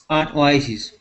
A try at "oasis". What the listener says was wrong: I want to practice the short I sounds with you here. Here we're going to say oasis instead of oases. Oasis.